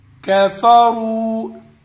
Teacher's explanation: کاف باریک ہے، را کو پر پڑھیں گے، واو ساکن اور اس سے پہلے جزم ہے، کیا نام ہے، پیش ہے، اس لیے واو مدہ ہوگا، تھوڑا سا کھینچ کر پڑھیں گے۔